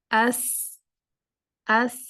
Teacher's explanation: جب سین سکون کے ساتھ آئے گا تو سین کو تھوڑا آپ نے کنٹینیو رکھنا ہے، سین کی آواز کو جاری رکھنا ہے تھوڑی دیر تک کے لیے، فوراً سے چھوڑ نہیں دینا۔ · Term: رخاوہ